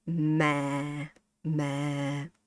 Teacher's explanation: You have to say ma, ma. Give it very low.